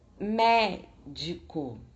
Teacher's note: A sílaba tônica é mé e as sílabas átonas são di e co, que são as sílabas mais fracas.